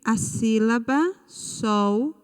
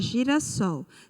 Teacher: a sílaba sol ela é a última sílaba da palavra então nós classificamos esta palavra como oxítona